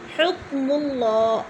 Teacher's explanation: حکم اللہ، اللہ پر پڑھا جائے گا کیونکہ اللہ سے پہلے لفظ میم کے اوپر پیش ہے تو اللہ کو پر کر کے پڑھیں گے۔